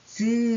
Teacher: 얘는 이 두 가지를 동시에 가졌죠? 그래서 막았다가 탁 터지는 게 아니라 막았다가 서서히 빠져나오는 소리 이런 걸 파찰음이라고 합니다. · 즈 하는 소리가 있죠. 즈 해서 막았다가 탁 터지는 게 아니라 막았다 즈 하면서 마찰과 비슷하게 소리가 빠져나가는 소리 파찰음에 해당해요. 자, 그 다음에 우리 공기가 코로 나가는 소리도 있어요.